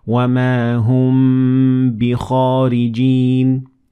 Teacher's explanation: if what comes after the Meem sakinah is a ba, then you'll extend the Meem for two harakat, which is about 1 second